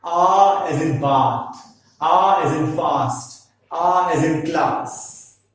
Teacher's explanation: Means the position of the tongue is lowered at its lowest point. So we can define it as a back, open, unrounded vowel.